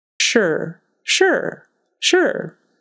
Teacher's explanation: even though it's spelled s r e but sure sure and don't make it too short like Americans they're not going to say it like sure sure it's got to be held out a little bit more you know we hold out our vows a little bit more